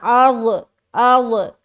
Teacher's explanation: زبان کا بغلی کنارہ جو ہے نا داڑھ کی جڑ میں سٹانا ہے، اس طرح سے ادا ہوگا کروٹ لیتے ہوئے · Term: ضاد